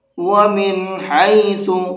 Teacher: یہاں نون کے اندر نہ غنہ کرنا ہے نہ اخفا کرنا ہے، کچھ نہیں پڑھنا ہے، اس کو صاف صاف پڑھیں گے، اس لیے کہ یہ نون ساکن ہے اور نون ساکن کے بعد میں ہا ہے۔ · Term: اظہار